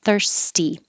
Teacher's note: this t is after a voiceless sound thurs so it stays off and it stays a t